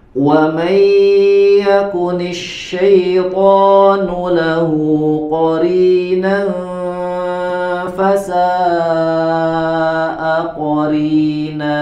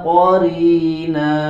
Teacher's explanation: huruf ro dibaca dengan tarqiq tipis karena dia berharokat kasroh